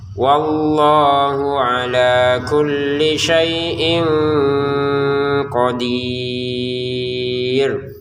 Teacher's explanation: Wallahu di sini Allahnya panjang kemudian hak-nya yang pendek.